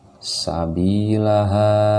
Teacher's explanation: bi-nya panjang, ha-nya panjang. Bi mad tabi'iyah, ha mad tabi'i alif di sini. Sinnya dibaca pendek.